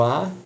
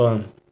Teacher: é um é oral outro é nasal é o mesmo a é o mesmo som que sai pela boca uma pela boca outra pelo nariz